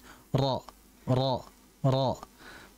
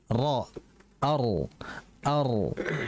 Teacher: Mengulang di sini adalah dengan adanya getaran pada huruf ra. Nah, ketika kita mengucapkan huruf ra, sekali sentuhan itu ada 2 getaran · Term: takrir